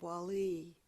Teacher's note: Wali with the emphasis on the second syllable